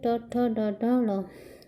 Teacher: मूर्धन्य इन व्यंजनों का उच्चारण तालु और जीभ की सहायता से होता है